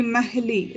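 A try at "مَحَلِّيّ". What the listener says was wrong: But it's not. It has a shadda. Mahalli.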